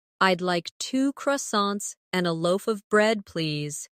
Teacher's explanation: In connected speech, loaf of sounds like loafa.